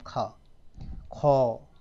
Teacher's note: लेकिन जब खा बोलेंगे हम, खा, खौ, तो वायु ज़्यादा निकलेगी, तो ये महाप्राण कहलाएगा। ठीक है, और अघोष कहलाएगा।